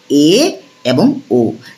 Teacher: এ এবং ও উচ্চারণ করার সময় জীব একটু নিচে নেমেছে। জাস্ট একটু নিচে নেমেছে। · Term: উচ্চমধ্য স্বরধ্বনি